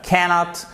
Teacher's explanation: cannot, avec un accent tonique sur la première syllabe, cannot, c'est la forme contractée de can't.